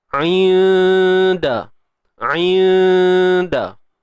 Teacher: Jangan sebut nun tepat pada makhrajnya. Kita bersedia nak sebut huruf dal, dan kita kena tahu dal ni huruf yang nipis. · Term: ikhfa haqiqi